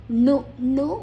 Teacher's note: ಮೂರ್ಧನ್ಯ, ನಾಲ್ಗೆಯನ್ನು ಮಡಚಿ ಹೇಳಬೇಕು